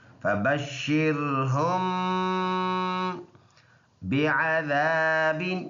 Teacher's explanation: ایک الف کے اندازے سے ناک میں آواز لے کے جائیں گے